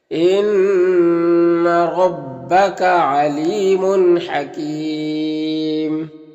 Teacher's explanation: یہاں پر یا مدہ ہے اور یہاں پر تنوین کے بعد ہا ہے حروف حلقی میں سے، تو اظہار حقیقی ہوگا، تنوین کو ظاہر کر کے جلد پڑھیں گے۔ حکیم میں وقف کی صورت میں مد عارض وقفی ہوگا، تو اس طرح سے پڑھیں گے۔